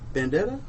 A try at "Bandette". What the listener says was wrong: It's Bandette. There's no A at the end of that.